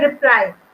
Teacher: we put more force on ply instead of read. That way we are putting the stress over here.